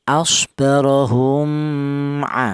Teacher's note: yaitu cara bacanya mim mati ini tidak boleh disamarkan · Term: izhar syafawi